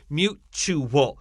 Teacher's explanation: the T here has a CH sound